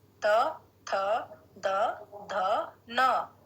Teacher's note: जब हम इसका उच्चारण करते हैं त वर्ग का तो हमारी जिह्वा दांतों को स्पर्श करती है।